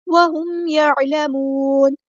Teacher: ما عقلوہ وہم یعلمون، ہاں ہم نے سمپل ادا کرنا ہے، میم ساکن کے بعد ٹائم نہیں دینا کیونکہ یہاں پہ اظہار شفوی ہو رہا ہے